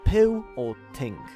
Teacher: the high central unrounded vowel, and it's very common in Polish